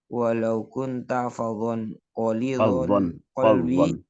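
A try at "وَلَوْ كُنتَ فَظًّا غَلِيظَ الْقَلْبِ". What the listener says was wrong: walau kunta fadhan tasydid ya fadhan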